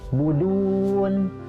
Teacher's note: du yang asalnya panjang 2 harokat, tapi karena bertemu nun sukun itu berubah menjadi mad arid li sukun, panjangnya bisa 2, 4 atau 6 harokat